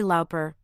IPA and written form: ˈlɔːpər (Lauper)